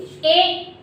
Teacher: इसका उच्चारण स्थान हमारा कंठ से होता है, तालव्य से होता है। बोलिए ए, तो यहाँ पर हाथ रखिए, ए बोलिए ए। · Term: कंठ तालव्य